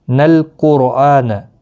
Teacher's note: نل قرآن نون لام کے ساتھ ملے گا، قاف مستعلیہ ہے پر پڑھا جائے گا، اور راہ بھی پر پڑھا جائے گا اس پیش کی وجہ سے، را ساکن سے پہلے پیش ہے اس لیے پر پڑھا جائے گا